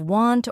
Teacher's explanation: if you don't say the T in want it might sound like one